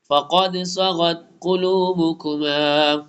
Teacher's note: صاد موٹے والے حروف میں سے پر پڑھا جائے گا